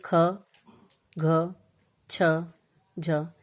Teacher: महाप्राण, इसके अंदर प्राण वायु का दबाव अधिक रहता है